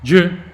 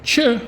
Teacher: you keep your hand in front of your mouth, j, you don't feel any air coming out of your mouth. But when I say ch, then you should feel, hey, there's air coming from my mouth and it's like going against my hand.